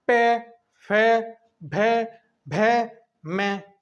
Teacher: तो हमारे दोनों होठ आपस में मिलते हैं, इसलिए इनको हम ओष्ठ्य व्यंजन भी कहते हैं